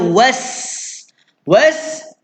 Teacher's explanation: Sin ada desir bunyi dia. Ada siul-siulan bunyi dia orang kata.